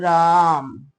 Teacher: रा को भी हम तीन गुना समय में बोलेंगे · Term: प्लुत स्वर